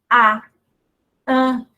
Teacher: a elevação do dorso praticamente não existe. A língua permanece baixa.